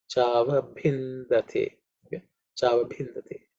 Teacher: Okay, the tongue should be parallel to the cavity of the mouth, roof of the mouth. The bhi is the fourth letter in the pa, so it has to be aspirate.